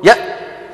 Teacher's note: شايفين الهمزة تك تك، ما في بس عملية القرع